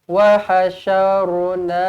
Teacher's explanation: Hum baca betul-betul dengan hum, jangan hom.